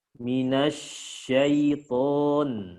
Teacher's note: fokus huruf shin, Pak. Dia ada nyebar suaranya, tafasyi